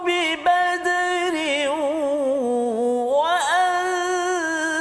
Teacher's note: Sebelum tu kita analisis satu ulang kaji kita tajwid, iaitu ayat 123, tanwin bertemu dengan waw. Tanwin bertemu dengan waw, bi badrin wa idgham ma'al ghunnah, dengung 2 harakat.